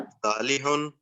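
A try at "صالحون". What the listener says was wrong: आप थोड़ा सा इसको ना स्वाद की तरह, जी स्वाद की तरह से, स्वालिहुन, स्वालिहूना।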